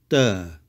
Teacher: It's weaker than the English T. It's not T, but d. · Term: d sound